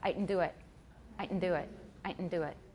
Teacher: it's a nasalized glottal stop